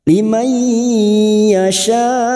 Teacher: harakat Lim Yasya Mad yang bertemu dengan Hamzah dalam satu kalimat mad wajib muttasil pada saat dibaca waqaf tetap lima harakat kita panjangkan Yasya ujungnya Hamzah jangan tertukar Ain Jangan dibaca Yasya ya jangan · masuk pada huruf ya dan mendengung selama dua atau tiga harakat